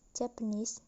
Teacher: In a word Japan, the stress is on the second syllable, then plus suffix is, the word become Japanese. The primary stress is on knees, while the secondary stress is on jet, the first syllable. So the stress is moved to the suffixes.